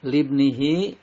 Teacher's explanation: Lib nihi, lib qalqalah sugro karena ada ba mati asli, dibacanya memantul. Lib nihi, hi-nya ini dinamakan mad silah qasiroh karena ada hak domir didahului huruf hidup dan tidak bertemu dengan hamzah, dibaca panjang 2 harokat